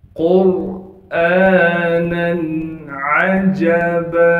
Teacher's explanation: قاف کو موٹا کر کے پڑھیں گے کیونکہ قاف موٹے حروف میں سے ہے